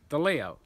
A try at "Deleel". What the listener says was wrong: Deleel. Leel. Not like Italian, like Deleo. Deleel. D-E-L-E-E-L.